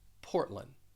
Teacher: when you say this you're going to drop the d and this is this is common this happens when the d follows an n · And also in that second syllable, you may have noticed, as you heard me say this, that I'm dropping the D. Even though the phonetic spelling and the IPA, they include the D, when you say this, you're going to drop the D. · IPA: ˈpɔrt lənd